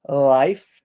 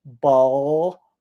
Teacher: life the tongue is up ball the tongue is down